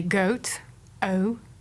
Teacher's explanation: American English speakers have a slightly different pronunciation of the goat vowel. They use a somewhat closer starting vowel and say goat, O, rather than goat, O.